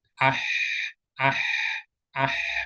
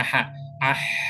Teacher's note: beda dengan ketika Ha ah ya jakun kita enggak bergetar pita suaranya enggak enggak bergetar Nah itu salah satu cara-cara apa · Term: Hams